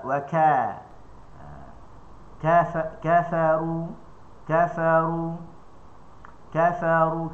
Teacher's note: Kerana pertemuan yang sempurna untuk huruf kaf pangkal lidah dengan di langit yang menyebabkan suara terputus. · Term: syiddah